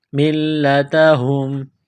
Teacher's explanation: میم کو لام کے ساتھ پلس کرنا ہے، لام میں سختی کرنی ہے، دبانا ہے